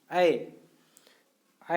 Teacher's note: जैसे ही आप उच्चारण करेंगे कंठ से निकलेगा ऐ, और थोड़ा सा तालु में आपको सटेगा